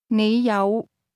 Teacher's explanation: The word have is pronounced with a low, rising tone.